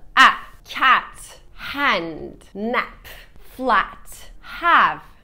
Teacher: A sesi arkadaşlar. Ne A ne E, ikisinin ortası. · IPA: æ